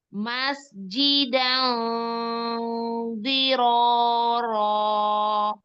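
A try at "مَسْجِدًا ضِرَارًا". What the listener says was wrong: Diulang lebih tebel lagi sayang. Jadi ingat-ingat ya, tebelnya benar-benar maksimal kalau di sini.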